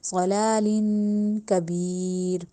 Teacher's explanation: لمبا کریں گے، ضلا لام کو لمبا کیا جائے گا، ضلالین، اب دو زیر آ گئی تو ناک میں آواز لے کے جائیں گے ، ضلالین کبیر، کبیر میں جائے مدہ پھر سے آ گئی،